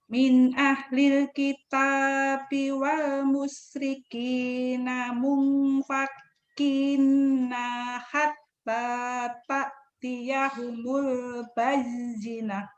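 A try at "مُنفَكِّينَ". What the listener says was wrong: Iya, tinggal dimumpakinnya masih ada ketahan. Wal musyrikina munfakina hatta ta'tiyahumul bayyinah.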